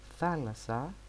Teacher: the double sigma in the word thalassa doesn't sound any different than the single sigma